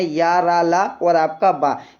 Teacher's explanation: इनका जो उच्चारण स्थान होता है दोस्तों वो जीभ, तालु, दंत, दांत और होंठों के परस्पर सटाने से होता है, किंतु कहीं भी पूर्ण स्पर्श नहीं होता है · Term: अंतःस्थस्थ व्यंजन